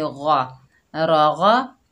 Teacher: गैन के ऊपर ज़बर बगैर खींचे पढ़ेंगे गा, गा को भी मोटा करेंगे क्योंकि गैन जो है हरूफ़े मुस्ताला में से है